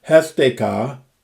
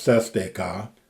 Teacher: the sigma disappears into an aspiration, the H sound